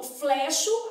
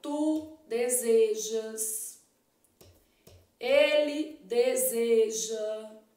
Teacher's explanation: apresenta vogal e fechada em toda a conjugação